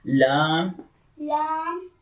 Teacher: The makhraj of lam is tongue tip touches gum line, okay? tip of the tongue, there is the tip of here is the tip of the tongue touches gum line like here.